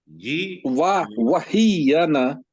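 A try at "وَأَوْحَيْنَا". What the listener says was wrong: نہیں یہ کے ساتھ مت بنائیں، یہ کو الگ پڑے.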